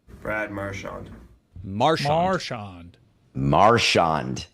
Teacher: He puts the emphasis on the first syllable.